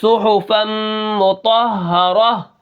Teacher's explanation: آخر میں نے ہا پڑھا ہے، تا کو ختم کر دیا ہے وقف کے اندر. تو یہاں پر یہ جو وقف ہو رہا ہے اس کو وقف بالابدال کہتے ہیں، اور ابدال کا مطلب ہوتا ہے بدلنا.